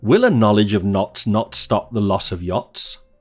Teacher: Notice the weak function words of lose the / ɒ / sound and take the schwa instead. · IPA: wɪl̩ ə ˈnɒ.lɪdʒ əv nɒts nɒt stɒp ðə lɒs əv jɒts